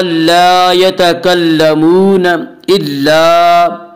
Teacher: صف لا یتکلمون الا، الف مدہ، الف ہمیشہ مدہ ہوتا ہے، الف سے پہلے زبر ہوتا ہے، الف مدہ کو ایک الف کے برابر کھینچ کر پڑھیں گے